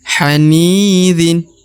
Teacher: huruf ni diayun sekali atau harus dibaca 2 harokat. Karena di depannya terdapat ya sukun atau ya mati.